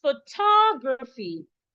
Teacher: So the T-O here should be stressed, should be pronounced toe. · you stress the antepenultimate syllable. That is the third syllable from the end. So I'm stressing the T-O.